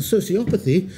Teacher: sociopathy with a stress on the second to last